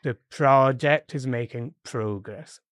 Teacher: it's progress again with the stress on the first syllable · The first one is a noun because we are starting with the. So the project with the stress on the first one because it's a noun.